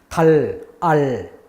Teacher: 혀가 입천장에 딱 붙어 있기 때문에 공기는 혀 옆을 돌아갑니다. 혀하고 볼하고 그 사이 공간을 통해서 공기가 흘러가죠. · 혀가 입천장에 딱 붙은 상태에서 안 떨어져요. 그러면 우리가 달 이렇게 소리 냈을 때 공기가 흘러가는데 어디로 가느냐? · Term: L 발음